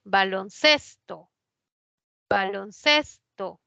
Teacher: Ses es la que lleva ahí la mayor fuerza de voz. Es grave, termina en vocal, no se tilda.